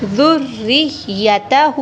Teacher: را کے نیچے زیر ہے تو را کو باریک پڑھیں گے۔